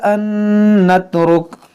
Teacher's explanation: نون ساکن کے بعد نون ہے، یہاں پر ادغام کریں گے